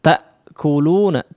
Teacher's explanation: ada pemotongan aliran suaranya ketika mengucapkan Hamzah tak kuluna tak para ada terputus sejenak di situ aliran suara